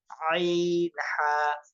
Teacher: দুই নম্বর মাখরাজ হলকের মধ্যখান হইতে